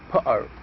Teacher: The T sound in butter is pronounced at the glottis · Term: glottalization of the T